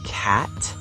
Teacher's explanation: For cat, your mouth is more open and your tongue is flat.